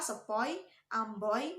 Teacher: Nah, diftong yang kedua adalah diftong oi. Diftong oi diucapkan mulai dari ucapan bunyi antara o dan i dan berakhir pada bunyi i tidak sempurna atau menghasilkan bunyi y.